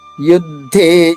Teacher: యు పైన ఆఘాత ఉంది దే పైన కూడా ఆఘాత ఉంది